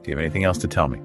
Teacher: I noticed that the voice naturally Rises at the end making it a clear question